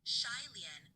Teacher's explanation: with a falling tone on Xie and a rising tone on Lien